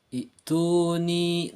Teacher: mengganti hamzah qata dengan ya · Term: ibdal